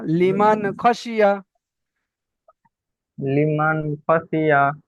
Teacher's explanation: নুন সাকিনের নুন সাকিনের পরে হরফে হালকির 6টি অক্ষরের মধ্যে খ এসেছে, তাই নুন সাকিনকে বিনা গুণা করে জাহির করে তাকে পড়তে হয়।